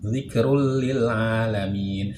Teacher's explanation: Cukup kita masukkan bunyi domatain kepada lam tanpa disertai dengung. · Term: idgham bila gunnah